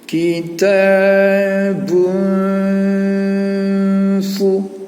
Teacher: saat kita mengucapkan bun ketemu sama fa, maka bunyinya harus samar, harus disamarkan bunyinya. Karena ikhfa itu sendiri artinya memang samar, nggak jelas, ya, agak tersembunyi dia.